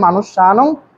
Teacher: মনুষ্যানং দন্তাশকে দন্তাশ উচ্চারণ করতে হবে